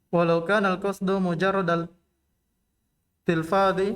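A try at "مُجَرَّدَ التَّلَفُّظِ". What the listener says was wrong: Tidak ada tilfad, tidak ada alif sebelum setelah fa. Tidak ada alif setelah fa. Tidak ada alif sebelum dha. Kaidahnya kalau di awal letak masdarnya di dhamma sebelum akhir.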